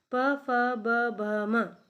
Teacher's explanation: प फ ब भ म, ये सभी व्यंजन हमारे होंठ को टच करके निकलते हैं, इसलिए इसको ओष्ठ्य व्यंजन कहते हैं।